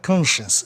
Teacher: E aí a sílaba tônica fica no O, né? Conscience, já que ciência, no fim, é uma sílaba única, com som chance.